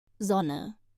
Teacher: In sonne, the O is short, like the O in hot. It's quick and not drawn out like in sohn.